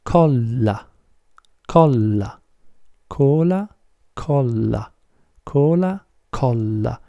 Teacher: if you put more emphasis on the sound L and you pronounce it twice as hard it becomes Cola